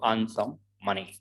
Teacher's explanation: r again it's before a consonant so we won't pronounce it